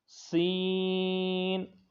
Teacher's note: اس میں سیٹی کی آواز آئے گی، یہ بھی حروف صفیریہ کا ہے اور اس کو لمبا کریں گے